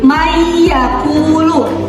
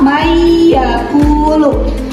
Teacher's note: Jadi nun sukunnya dihilangkan atau tidak dibaca jelas tetapi dimasukkan ke huruf selanjutnya. · Idgam digunah membacanya dileburkan sekaligus ada dengungan. Kalau idgam bila guna hanya dilebur saja tanpa ada dengungan sama sekali. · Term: idgham bigunah